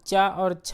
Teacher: चा और छा जो है आपके तालु वर्ण का उच्चारण स्थान है